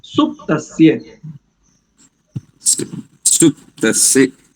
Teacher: सुपतस्य नहीं करेंगे, सुप, इसमें पकार आधा है तो सुप्तस्य।